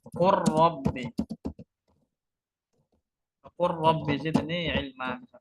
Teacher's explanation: Lam ketemu ro ini hukumnya idgham ya. Lam dan ro ini makhrajnya berdekatan.